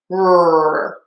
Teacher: What I mean by that is I make my R with the tip of my tongue down and the back of my tongue pulled high up